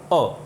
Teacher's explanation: अ का जब हम उच्चारण करते हैं तो आप अ का उच्चारण करके देखिए, अ, तो यानी मुंह ज़्यादा नहीं खुलता है हमारा, एक मध्यम रेंज में आ जाता है अ, और हमें ऐसा महसूस होता है कि जो आवाज़ आ रही है वो हमारे जीभ के मध्य भाग से निकल रही है। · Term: मध्य स्वर